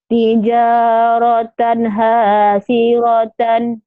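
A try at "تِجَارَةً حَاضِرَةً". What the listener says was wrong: tijaratan hadiratan, bukan hasiratan ya Bu. Tapi ngomongnya dodol, haldirotan, dodol Garut. Dodol, haldirotan ya Bu ya.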